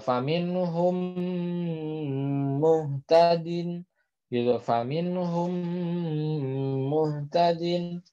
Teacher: mim sukun bertemu dengan huruf mim, maka tetap wajib ditahan ya, wajib ada gunnahnya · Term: idgham mutamatsilain